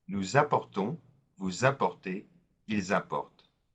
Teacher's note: we're marking the liaison between the nous and the verb apporter because it starts with a vowel, and that's true also with the vous and il, elle.